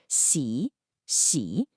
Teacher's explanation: Your tongue should be flat with the tip right behind your bottom front teeth. It's a high, hissy sound. Si, si, very different from the sh in sh. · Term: the X sound, X sound